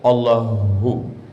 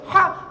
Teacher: Kalau Allahu, kalau dipegang dada bergetar dia, Allahu. Tapi kalau ha, tak ada getar.